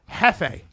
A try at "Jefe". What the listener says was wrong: Hefe. Because it was supposed to be Spanish because the J is silent.